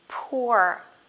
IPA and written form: pʊə (poor)